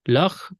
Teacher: Lach follows an open syllable, so the kap is spirantized